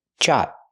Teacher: Make a stop T. Stop the air. Jot. Link to the next sound.